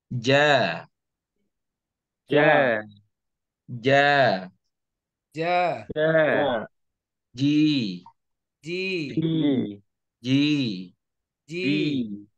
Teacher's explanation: huruf ja ini dia nanti sifatnya adalah jahar sehingga tidak ada mengalirnya nafas atau udara